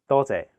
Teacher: the first character is in high flat tone first tone it means many th and the second character is a low